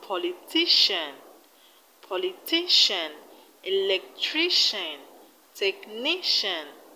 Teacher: all of them have their stress on the second syllable from the end in politician we have the stress on ti politician in electrician